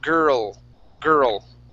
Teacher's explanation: So your tongue goes up and touches the top of your mouth, and that's how you pronounce that L. Okay, so it's girl, girl.